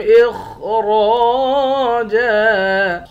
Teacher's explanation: خا کو موٹا پڑھیں گے اور اس خا کو بھی موٹا پڑھیں گے، را کو بھی موٹا پڑھیں گے۔ را کے بعد الف ہے، الف حروف مدہ ہے، ایک الف کے مقدار کھینچ کر پڑھتے ہیں۔ آخر میں دو زبر کی تنوین ہے، دو زبر کی تنوین میں جب وقف کرتے ہیں ایک زبر بن جاتا ہے۔